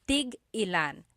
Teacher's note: So tig-ilan, when there's a hyphen in it, you have to have that glottal stop.